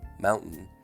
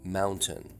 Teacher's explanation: the more General us pronunciation with the glottal stop followed immediately by a nasal